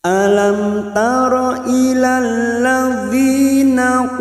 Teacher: Mim sukun bertemu ta idhar safawi. Mim sukun dibaca jelas tanpa mendengung.